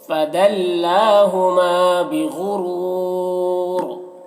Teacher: فدلّا لام میں کھڑا زبر ہے جو الف مدہ کی طرح ہوتا ہے · بغرور غین حروف مستعلیہ میں سے ہے، را کو پر پڑھیں گے، اور یہاں پر وقف کی صورت میں را کی دو زیر کی تنوین سکون سے بدل جائے گا تو پھر را کو پر پڑھیں گے، اور وقف کی صورت میں مد عارض وقفی بھی ہوگا۔